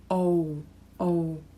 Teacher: pronounce this sentence here just pay attention to the stiff tongue the double vowel o o so you have o and o connected so it's really smooth